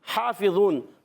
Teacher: Good, تو یہاں اظہار شفیع ہوگا، حافظون، ہا کا مخرج ہے حلق کا درمیان والا حصہ، ہا پر کھڑا زبر ایک الف کھینچیں گے، فا کے نیچے زیر ہے، حرکت کو نہیں کھینچیں گے، کھڑی حرکات کو کھینچتے ہیں، حرکات کو نہیں کھینچتے.